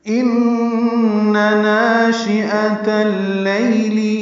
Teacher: نون مشدد پہ غنہ ہے اور نون کی زبر کو جلدی پڑھنا ہے. ناشئہ میں نا الف مدہ ہے، حمزہ یا کی شکل میں عطا کو اللیل کی لام سے ملائیں گے، دیں گے ناشئۃ اللیل.